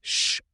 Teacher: in sound, ship begins with sh, a single phoneme. The mouth does one action, not two. If you stretch the beginning of ship slowly, you do not get s followed by h.